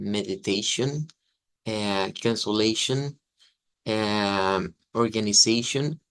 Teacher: tiene una terminación de una SH con una schwa y una N. Y es que escuchamos que todas terminan como algo como shon.